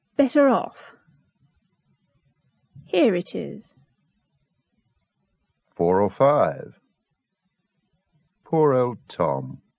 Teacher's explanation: Phrases with the linking R